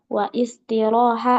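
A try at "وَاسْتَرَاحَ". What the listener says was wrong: Was wastaroha disambungnya wastaroha.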